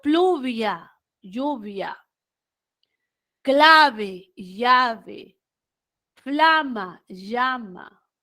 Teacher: Los grupos iniciales PL, CL y FL evolucionaron a la EYE